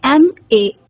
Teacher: जो ध्वनि आ रही है वो स्वर की है या व्यंजन की है। जैसे एम ए, एम जब हम बोलते हैं तो जो पहली ध्वनि आती है वो ए है जो कि एक स्वर की ध्वनि है, इसलिए यहाँ पर ए का प्रयोग ना होकर एन का प्रयोग होना चाहिए।